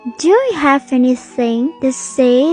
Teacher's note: Have nối âm với anything.